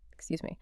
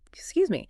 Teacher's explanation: A gentle, slightly rising intonation, excuse me, sounds polite, like a question, right? >> But a sharp falling intonation, excuse me, can sound impatient, even annoyed.